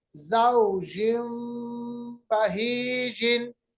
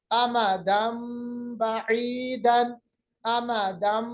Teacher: नून की आवाज को तब्दील करके मीम की आवाज में लाएंगे, बदल लेंगे, इसको हम इक़लाब कहते हैं।